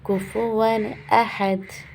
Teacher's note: احد الف نارمل پڑھا جائے گا، ہا حلق سے پڑھا جائے گا. دال پہ ہم جزم لگا دیں گے تو یہاں ہو جائے گا واضح قلقلہ، زوڑ دیں گے، ٹھیک ہے.